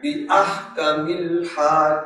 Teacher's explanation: یہ دونوں ہا حلق سے آئیں گی